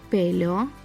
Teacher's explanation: Pelo, here the stress falls on the first syllable.